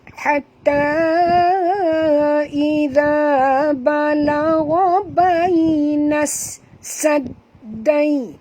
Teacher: Masukkan bunyi nun ini terus ke dalam sin disertai dengan jud kerana di atas sin ada tasydid, di atas dal pun ada tasydid. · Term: alif lam syamsiah